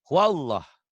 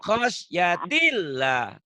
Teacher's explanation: Ini lafaz Allah dibaca tebal karena sebelumnya baris atas nih Bu.